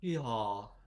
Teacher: I think we're dealing with a voiced glottal fricative um followed by a low back vowel that seemed long